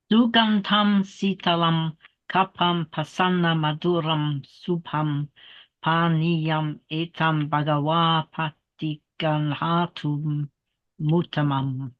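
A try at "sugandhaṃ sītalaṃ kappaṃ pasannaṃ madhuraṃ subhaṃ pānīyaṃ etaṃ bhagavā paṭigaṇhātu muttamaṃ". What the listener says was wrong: That was pretty good, but just emphasize the doubled consonants a little bit more. It is quite important to emphasize those doubles.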